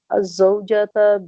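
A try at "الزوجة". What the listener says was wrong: الزوجۃ. فتح نہیں آئے گا آخر میں.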